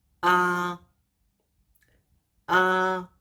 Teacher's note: The second tone is a rising sound. It sounds like when you say English like yes, right, do I. · Let's start with the first tone. The first tone is high and flat. When you pronounce that, you can imagine you are a robot.